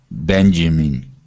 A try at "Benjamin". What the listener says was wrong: Good. One more time.